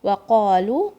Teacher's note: Qaf comes from the back of your tongue.